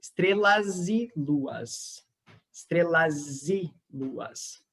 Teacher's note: So estrelas. And this S becomes a Z when the next sound is voiced